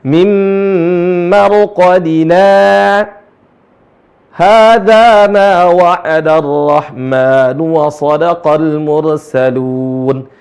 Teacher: Jadi berhenti sejenak tanpa napas. Itulah yang disebut dengan saktah.